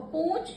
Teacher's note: ऊ की मात्रा नाक के प्रयोग के द्वारा हो रही है। तब उसमें अनुनासिक लगेगा।